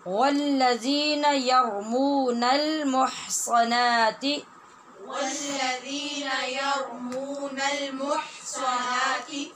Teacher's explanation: यार यहाँ रा पूरा है और मुह हा नरमी से और वस्ते हलक से अदा होने वाली है, और सा मुह सा ये पूरा हरफ है, और नाती इसके ऊपर खड़ी ज़बर होने की वजह से लंबा किया जाएगा